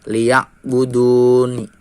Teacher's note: Karena huruf mad jatuh sebelum huruf yang diwakafkan. Nah, cara membacanya dengan dipanjangkan 2 sampai 6 harokat. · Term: mad arid lisukun